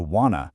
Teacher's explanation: Notice how that hard t sound basically just vanishes across the board.